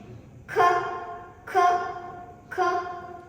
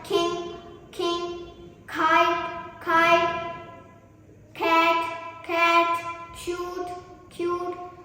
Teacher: The third voiceless plosive sound is K